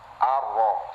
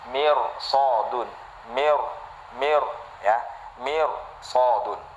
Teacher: Sifat takrir itu wajib ya bergetar ketika kita melafalkan huruf ro.